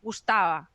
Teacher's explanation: mucho más suave no no hay un contacto de los labios